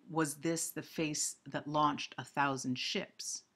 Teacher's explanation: In that line, was this, is one unstressed and one stressed foot. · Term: iambic